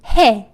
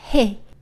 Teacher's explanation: you don't pronounce the full yeh sound, but it changes to eh sound instead